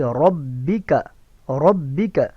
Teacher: وجہ ربک، ربک، ربک، یہ دونوں درست. را زبر اور قاف نہیں ہے بلکہ کاف ہے، کاف کو باریک پڑھیں گے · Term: کاف باریک